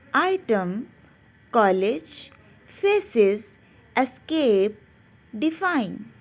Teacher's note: This happens in weak, unstressed syllables. Here are some words of schwa sounds in which the E is in the unstressed syllable and has the schwa sound.